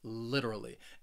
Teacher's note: That third syllable, it has that schwa, that literally.